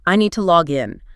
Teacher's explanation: they put a slightly heavier stress, a little more breath on the second word. >> On the in.